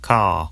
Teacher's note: Father ends in a simple schwa vowel, like father. And in car, the vowel sound is lengthened in place of the R sound.